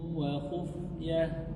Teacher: Tanwin yang berjumpa dengan waw masukkan, idgham artinya masuk, bi gunnah artinya dengung. Masukkan tanwin ke waw disertai dengan dengung dua harakat. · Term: idgham bi gunnah